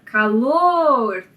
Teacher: calor e aí você conta da direita para esquerda nesse caso a sílaba tônica é a última sílaba da palavra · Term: palavra oxítona